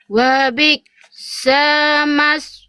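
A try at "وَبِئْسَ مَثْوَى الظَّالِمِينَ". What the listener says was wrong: Sanya Bunda bisa lebih cepat di sini ya. Sanya jangan dikasih jeda terlalu lama Bun. Tadi Bunda gini, wabi sama kelamaan sanya. Langsung wabi sama langsung. Sanya 1 harokat.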